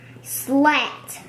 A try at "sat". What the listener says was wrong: There's no L. Sat.